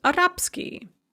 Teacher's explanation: it's very common with these ski adjectival endings you're going to de-voice whatever comes before